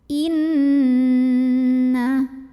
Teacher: [Musik] Inna disini ada hukum gunnah karena ada Nun yang bertasydid cara membacanya didengungkan bunyi n-nya tahan kurang lebih 2 harokat sampai ada getaran halus ke hidung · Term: gunnah musyaddadah